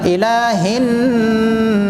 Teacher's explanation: نون کے اوپر تشدید ہے اور سین والا سیٹی والا ہے تو ناس سیٹی ہوگا